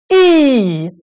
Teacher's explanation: today's vowel is also front vowel e the sound comes from the front that's why it's called the front vowel e a lot of